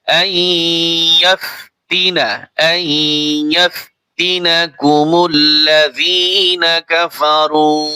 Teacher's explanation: নুন সাকিনের পরে ইয়া আসছে, ইদগাম হবে।